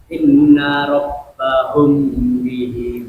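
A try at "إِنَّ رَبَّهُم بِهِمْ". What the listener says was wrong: Kurang sedikit lagi humnya. Inna rabbahum.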